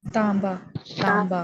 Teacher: इसके बीच में भी मीम की साउंड आ रही है